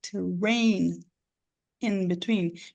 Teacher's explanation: eu não vou juntar esse n com esse I Porque eles estão separados